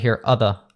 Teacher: But if it's followed by a consonant like the, so anytime you see of the, usually you're going to hear other. It's a schwa sound, as we call it.